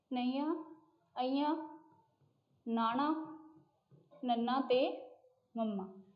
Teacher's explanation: साडे मूँह विचली हवा किसी ना किसी रुकावट के कारण साडे नक राहीं बाहर निकलती है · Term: नासकी व्यंजन